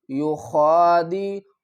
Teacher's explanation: یخادعون اللہ والذین آمنوا، یا پیش یو خا کھڑا زبر خا، یو خا کو ہم حلق کے اوپر والے حصے سے ادا کریں گے اور اوپر کھڑا زبر ہے تو اس کو ایک الف کی مقدار کھینچ کر بھی پڑھیں گے۔